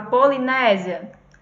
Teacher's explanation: essa terminação dela com i.a. é um ditongo porque a gente tem duas vogais juntas